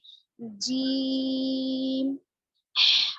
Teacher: زبان کے بیچ والے حصے کو اوپر کے تالو کے بیچ والے حصے کے ساتھ لگانے سے نکلتا ہے